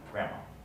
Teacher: The D is not pronounced, grandma.